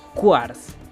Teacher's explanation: yo pronunciaría la Q tal cual, es decir, quarts, como si agregara una pequeña U entre la Q y la A, para diferenciarlo de cars.